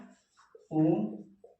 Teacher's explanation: मतलब कंठ और ओष्ठ दोनों से बोले जाते हैं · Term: कंठ ओष्ठम